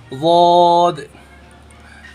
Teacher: ज़बान की करवट हमारे ऊपर के दांतों के मसूड़े में लगना चाहिए तो निकलता है वौद।